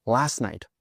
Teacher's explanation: We also drop the t sound in last.